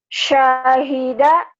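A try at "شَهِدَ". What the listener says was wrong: Soalnya nggak boleh panjang. Nggak boleh. Kosar ya, pendek. Lagu boleh, tapi di yang pendek kan jangan mentang-mentang berlagu semaunya. Misalkan Syahida, nggak bisa.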